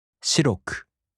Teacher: In this form, the accented mora is also different between the downstep type and the flat type. In the downstep type adjectives, the accent falls on the third to the last mora. For example, 白い turns into 白く, and the accent falls on し. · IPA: [shiꜜroku]